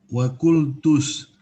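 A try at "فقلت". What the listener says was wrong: Fa bukan wa, fa.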